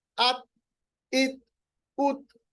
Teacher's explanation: ता के ऊपर जब सुकून होगा, जज्म होगा, तो आवाज जो है उसको हम अपनी जगह पे ही रखेंगे, रिबाउंड नहीं करेंगे।